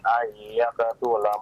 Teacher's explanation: Itu ada idgham bi gunna, ditahan 2 harakat.